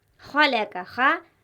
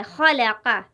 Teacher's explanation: خا حلق سے ادا ہو رہا ہے، خلق۔ اسی طرح یہاں کاف بھی حلق سے ادا ہو رہا ہے، خلق، خلق۔